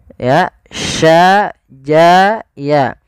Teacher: Kita sesuaikan makhraj daripada huruf shin. Makhrajnya adalah tengah lidah kita.